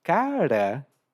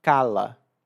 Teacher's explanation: ele não fala a letra ra r assim vibrada ele fala lá então em vez de dizer cara ele diz cala a gente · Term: problema de dicção